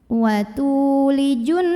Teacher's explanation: Kemudian di sini ada alif lam syamsiyah karena ada alif lam yang bertemu huruf syamsiyah yaitu nun. Maka alif lamnya ini tidak perlu dibaca, masukkan langsung dari jim ke nun. Wa tulijunna.